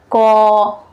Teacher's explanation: थोड़ा लंबा बोल करके देखिए तो अ का ही वॉइस आएगा आपको